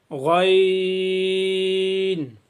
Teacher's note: پچھلے سبق میں ہم نے خا پڑھا تھا، اور آج کے سبق میں ہم نے غین اور خا کا بھی ایک ہی مخارج ہے، یعنی ایک ہی جگہ سے ادا ہوں گے۔ حلق کے پہلے حصے سے جو منہ کی طرف ہے